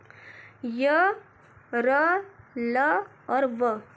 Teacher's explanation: अंतस्थ व्यंजन वह व्यंजन होता है जिनके उच्चारण में मुख बहुत संकुचित हो जाता है, यानी कि मुंह बहुत सिकुड़ जाता है और वायु स्वरों की भांति बीच से निकल जाती है। उस समय उत्पन्न होने वाली ध्वनि को ही हम अंतस्थ व्यंजन के नाम से जानते हैं।